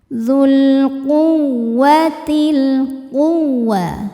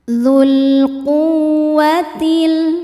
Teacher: Waw tasydid dibaca dengan nabr. Nabr itu menaikkan intonasi suara, jadi nggak usah ditahan.